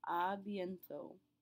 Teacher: we're not pronouncing the final T